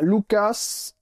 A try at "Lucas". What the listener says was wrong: Ouais, on prononce pas le S.